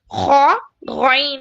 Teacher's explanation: ऊपरी हिस्से से खरखरी वॉइस के साथ, गरगलिंग साउंड, जैसा ना खकार, सुबह सुबह हम लोग है ना सफरा निकालने के लिए जैसा खकारते हैं ना, उसी उसी साउंड से, गरगलिंग साउंड से खौ गॉइन अदा होता है।